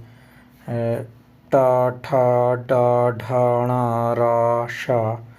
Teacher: मूर्धन्य तालु के मूर्धा भाग से